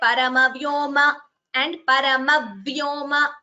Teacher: You have that second v being heard. That is Dvitvam. Dvi means 2 in Sanskritam, the double sound which you hear.